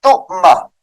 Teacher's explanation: جھٹکا دے کر پڑھیں گے. تؤمہ، تا حمزہ پیش تو